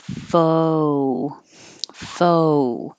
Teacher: making the American O sound as 2 parts. So it's not just a full, but foe.